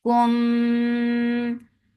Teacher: Kum for dhamma circle lips, and here you are giving ikhfa shafawi, and with gunna.